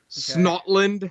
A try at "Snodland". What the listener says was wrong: Snodland. It has a D. Snodland.